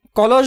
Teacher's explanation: কলস বানানে অধ্বনির পর অধ্বনি থাকায় প্রথম অধ্বনি অর্ধবিবৃত এবং দ্বিতীয় অধ্বনি বিবৃত উচ্চারণ হয়েছে